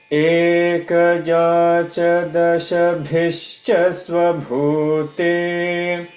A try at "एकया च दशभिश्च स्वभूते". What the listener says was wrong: दशभिश्च स्वभूते स्वभूते should be more holding. Swa should be more holding. एकया च दशभिश्च स्वभूते